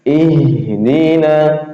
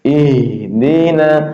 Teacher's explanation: Hams, nafas berjalan keluar ketika kita mengucapkan h, apalagi sukun ya. Ya, gitu. Jadi ada udara keluar.